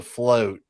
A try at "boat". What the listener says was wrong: There's no L. not the float. There's no L. No L.